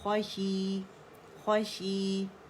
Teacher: 2 count مد اصلی ہے، 2 کاؤنٹ آواز نیچے جائے گی. خوشی، اور خا کی موٹائی قائم رکھیں گے.